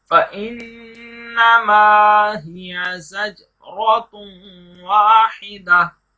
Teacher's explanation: زجرتن پر قلقلہ کریں گے